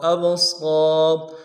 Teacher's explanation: حمزہ کو با کے ساتھ ملانا ہے، با جب جزم ہو تو قلقلہ ہوگا · صاد کے ساتھ الف بنتا ہے، ایک الف مدار میں کھینچیں گے، ابصار، را کو موٹا کریں گے، ابصار والابصار والافئدة، واو کو لام کے ساتھ ملانا ہے، لام ساکن ہے، غنہ نہیں ہوگا۔